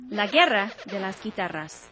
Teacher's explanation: the G is neither silent nor is it pronounced as strongly as a hard G in English · When G is followed by UE or UI, the U is silent like in the English word guest.